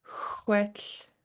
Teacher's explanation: It has a Lingit L at the end. So let that air come out on the sides of your tongue